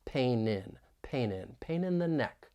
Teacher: linking a final n Sound with the preposition in